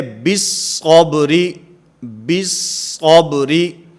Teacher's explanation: با کو صاد کے ساتھ ملا کر پڑھا جائے گا، اس کے اندر لام تعریف کو نہیں پڑھا جائے گا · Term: ادغام